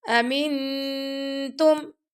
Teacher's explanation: हमने नून की आवाज ता के मखरज के पास छुपाएंगे · ہم نے نون کی آواز تا کے مخرج کے پاس چھپائیں گے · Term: इफा, اخفا